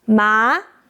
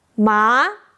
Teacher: That's mark for the second tone. The pronunciation is start lower than the first tone. The first tone is high. The second tone is lower.